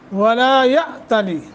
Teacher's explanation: جھٹکا دے کے پڑھیں گے، حمزہ ساکن ہے